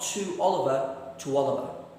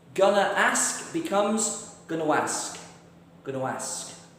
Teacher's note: You can hear that W sound has jumped into the middle.